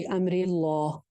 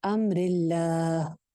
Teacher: اللہ کے لام کو موٹا نہیں کرنا ہے, باریک رکھنا ہے